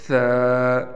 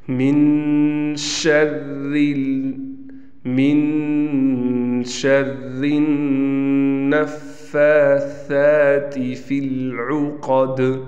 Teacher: اس کو ادا کرتے ہوئے آپ نے ایک بات کا خیال کرنا ہے کہ اپنے جو سامنے دونوں دانت ہیں، اوپر کے بھی نیچے کی بھی، سامنے کے جو دانت ہیں اس کے درمیان میں اپنی تھوڑی سی زبان کی نوک کو لانا ہے اور اس کے بعد ثا کو ادا کرنا ہے، تو انتہائی نرمی کے ساتھ اچھے طریقے سے مخرج سے ثا ادا ہو جائے گا۔